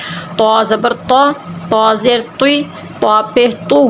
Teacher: منہ گول کر کے موٹا کر کے تو